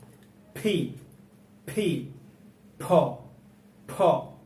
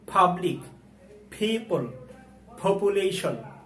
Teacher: ফি, ফি দিয়ে আমরা ফ সাউন্ড পেয়ে থাকি এবং ফি উচ্চারণ করার সময় দুই ঠোঁট মিলিয়ে বাতাস বের করে উচ্চারণ করতে হবে